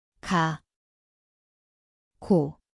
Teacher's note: স্থান হল জিভের পেছন।